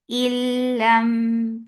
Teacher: This is idgham, but without gunna, so you are not keeping the sound in your nose at all. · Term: idgham without gunna